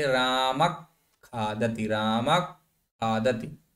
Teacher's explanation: ख से पूर्व विसर्ग है रामः तो इसको सामान्यत राम नहीं पढ़ेंगे इसको अर्ध विसर्ग की तरीके से पढ़ेंगे रामक खादत रामक खाति पूरा विसर्ग का उच्चारण नहीं होगा का